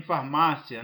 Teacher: Em farmácia nós temos o encontro da semivogal I mais a vogal A.